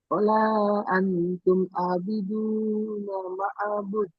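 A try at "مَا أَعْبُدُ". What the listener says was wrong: না, মাটা টান হবে, মা হবে, মদ আছে, মিম আলিফ মদ যাবার মা মাদ্দে মুনফাসিল। আবিদুনা মা আ'বুদ।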